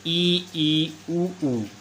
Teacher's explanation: जब समृत स्वरों का उच्चारण किया जाता है तो जिह्वा का अग्रभाग अधिक ऊंचाई पर होता है जिससे मुख प्राय बंद रहता है